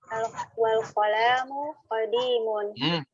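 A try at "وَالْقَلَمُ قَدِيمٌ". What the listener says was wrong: La-nya enggak panjang, Bu.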